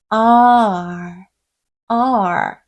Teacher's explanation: 목구멍 가까이 눕혀주시면서 혀 양쪽이 윗니에 달라붙는 소리예요. R, R. 그렇다고 해서 공기가 나오는 구멍이 막히면 안 되고요.